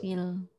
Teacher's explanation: filnya dia panjang tapi setelahnya sukun maka batal panjang, jangan dibaca panjang. Fil langsung.